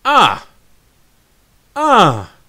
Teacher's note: tone number 4 is falling. It's like if someone hits you and you say, ah, ah.